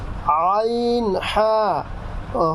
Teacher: দুই নাম্বার মাখরাজ হচ্ছে হলকের মধ্যখান হইতে